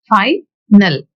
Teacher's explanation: The stress is marked at the beginning of the word final. Usually, in nouns and adjectives, we mark the stress mark at the beginning of the word itself.